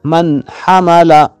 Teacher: نون ساکن کی آواز کو ظاہر کر کے پڑھیں گے، غنہ نہیں ہوگا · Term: اظہار